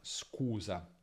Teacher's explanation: Lì la k non è aspirata, proprio come in italiano.